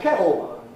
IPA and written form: ˈkeʔo (kettle)